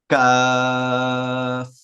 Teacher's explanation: জিহ্বার গোড়া থেকে জিহ্বা প্রসারিত করে তালুকে স্পর্শ করে উচ্চারণ করা হয় কাফ।